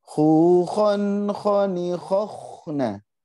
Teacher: secara makhraj sudah tepat ya, makhrajnya di ujung tenggorokan paling ujung sudah tepat, tinggal udaranya saja dilatih lebih banyak lagi.